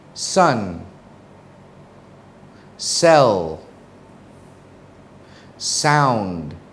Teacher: they're voiceless they're made without using your voice box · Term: s sound